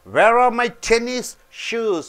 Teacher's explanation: Tennis should be stressed because two nouns are there.